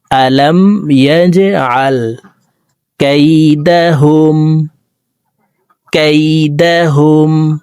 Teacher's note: জিম কলকলার হরফ, ইয়া জিম জবর ইয়াজে, নিচের দিকে ধাবিত করে ধাক্কা দিয়ে উচ্চারণ করব।